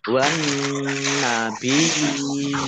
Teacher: Wan nabiyina alif lam samsiyah karena tidak dibaca langsung masuk ke huruf berikutnya yaitu nun ditandai dengan nunnya ada tasdidnya. Nun tasdid dibaca gunnah atau mendengung dibaca ditahan 2 harokat.